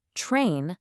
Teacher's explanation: Whenever you have a T sound right before an R, like in the word train, that R posture often causes the T to sound a lot more like a ch sound